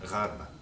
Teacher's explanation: ghain is fricative on the soft palate.